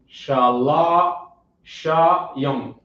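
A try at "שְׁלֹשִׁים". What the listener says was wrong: Put it together. Shalashim.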